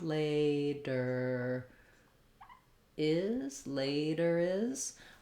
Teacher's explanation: use that R, link it to the next word is.